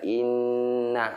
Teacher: Mim dan nun yang bertasdin. Kuncinya apa kuncinya? Ditekan, ditahan, dan mendengung. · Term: huna